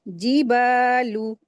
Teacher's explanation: व इज़ जिबालु जाल को लाम में मिलाकर पढ़ेंगे और फिर बा के साथ अलिफ मद्दा है। दो हरकत खींचेंगे।